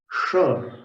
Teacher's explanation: षटकोण वाला जो श है, उसका उच्चारण स्थान भी मूर्धा है। जीभ को सिर की तरफ ले जाकर के उच्चारण करते हैं।